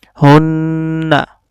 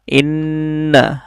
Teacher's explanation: মিম এবং নুনের উপর তাজদিদ থাকার কারণে মিম এবং নুন গুণনা করে পড়তে হচ্ছে। হামজা নুন জের ইন, নুন জবর না, ইন্না।